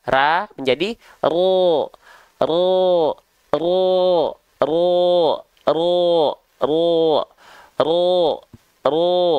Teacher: bunyi vokal o-nya itu sama sekali tidak bertumpu pada bibir yang dibonyongkan dimuncungkan